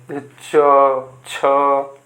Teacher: इनको बोलते समय हमारा जो जीभ जो होती है थोड़ा संघर्ष करती है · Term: स्पर्श संघर्षी